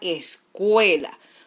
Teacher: su mayor fuerza de voz está en la vocal E, que es una vocal abierta. Y la vocal U, que es una vocal cerrada, se encuentra en la sílaba átona. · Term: diptongo